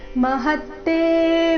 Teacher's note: ಹ ಮೇಲೆ ನೈಸರ್ಗಿಕವಾಗಿ ಆಘಾತ ಮುಂದೆ ತ ಕ್ಕೆ ತ ದ ಒತ್ತು ಬಂದ ಕಾರಣ